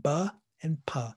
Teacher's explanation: They're both made by restricting the sound completely with your lips.